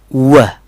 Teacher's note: Then is W और इसकी आवाज़ है व. जैसे दोनों होंठों को हम गोलाई में विसल बजाने के लिए बनाते हैं, वैसे ही व साउंड के लिए हम उनको टर्न करेंगे